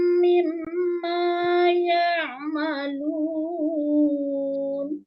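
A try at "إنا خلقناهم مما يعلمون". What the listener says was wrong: Kebalik, bukan ya'malun, ya'lamun.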